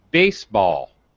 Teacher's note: are both pronouncing these things la la baseball all right baseball primary stress on the first word very high pitch baseball very low pitch on the second word